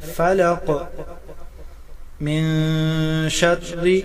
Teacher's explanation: نون ساکن کے بعد حروف اخفا میں سے شین آ رہا ہے، یہاں اخفا مع الغنہ ہوگا